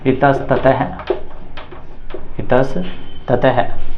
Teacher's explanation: तो यहां पर देखो पूर्व पद के अंत में विसर्ग है विसर्ग का मेल त के साथ में हो रहा है तो विसर्ग है वह स में बदलेगा और कौन सा स बनेगा दंते स इस प्रकार से बनेगा